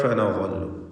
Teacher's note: ഇഖ്ഫാ ഹഖീഖി നൽകി മറച്ചു മണിച്ചു ഉച്ചരിക്കണം. തൻവീനിനെ മണിച്ചുകൊണ്ട് അവ്യക്തമാക്കി ഉച്ചരിക്കുക.